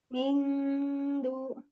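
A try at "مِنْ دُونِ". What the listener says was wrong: Ya, jadi jangan nempel ke nun, jangan nempel ke dal ya. Ngambang ya, siap-siap aja.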